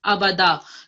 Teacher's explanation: Okay, so the da was correct, but it sounded as if the ba had tashdid on top or shadda on top. So don't give emphasis to the ba. Just say aba and then da.